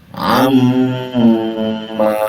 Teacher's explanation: Apabila ada nun bertasdid atau mim bertasdid disebut dalam ilmu tajwid adalah gunnah. Gunnah itu dengung, memang didengungkan ini, ya. Dengung itu ada suara dengung itu di hidung, ya. Maka kita bisa lihat suara gunnah itu adanya di hidung.